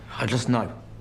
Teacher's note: Professor Snape is speaking very slowly, so the t sound in just is still there.